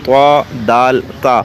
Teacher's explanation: آگے حروف نطعیہ یعنی وہ حروف جو تالو کے اگلے حصے سے ادا ہوتے ہیں